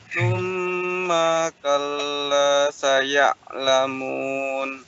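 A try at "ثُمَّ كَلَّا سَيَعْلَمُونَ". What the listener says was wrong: Baik, coba la-nya panjangkan dikit lagi. Kalla saya'la.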